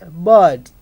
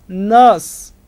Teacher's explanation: the lips are spread and that's why it is unrounded